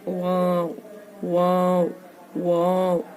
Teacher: वाओ का आवाज होठों के अधूरे मिलने से ही आता है। किसी भी तरीके से आप होठ कर लेंगे और वाओ कहेंगे तो नहीं चलेगा।